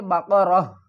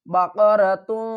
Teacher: تا اور دو پیش کو ڈراپ کر دیں گے